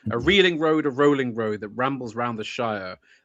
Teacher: And it's unstressed, stressed, unstressed, stressed all the way through. I'm pretty sure, though I don't know that it's strictly. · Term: iambic